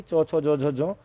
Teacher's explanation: उसके बाद अगर जो चौ होती है दोस्तों, चौ वर्ण की, चौ, छो, जो, झो, जो, तो ये हो जाती है आपकी ओष्ठ्य, यानी कि आपके ओंठ गोल हो जाएंगे चौ, छो, जो बोलने में